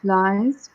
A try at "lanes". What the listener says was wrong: Not lines, lanes. Okay, lanes.